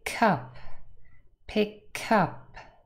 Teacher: the k in pic has also joined with up so it sounds like cup